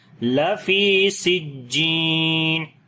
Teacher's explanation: فی کو لمبا کریں گے، یا مدہ ہے، اور جیم کو لمبا کریں گے، یہاں پر بھی یا مدہ ہے